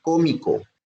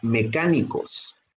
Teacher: la sílaba tónica es la antepenúltima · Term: esdrújulas